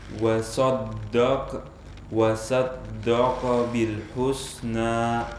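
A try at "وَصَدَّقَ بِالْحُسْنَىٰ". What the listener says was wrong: Baik, untuk antum kayaknya saling mempengaruhi nih. Tebal, tipis, tebal, tipis. Tipis kadang jadi tebal jadi tipis. Lihat, wasad, sodnya menjadi tipis ya. Kemudian dalnya berubah menjadi tebal. Jangan. Wa saddaqo. Ini tipis, tebal, tipis, tebal.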